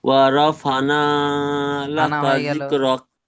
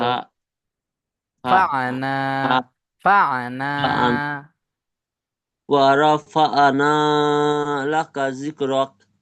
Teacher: ফানা হয়ে যাচ্ছে, আইন গুলো উচ্চারণ করছেন না।